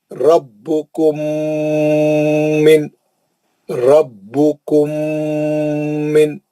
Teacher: را کو موٹا پڑھیں گے, با کو سختی سے پڑھیں گے